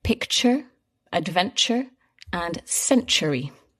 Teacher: So all these words have that same sound where the t becomes a little bit like a ch sound.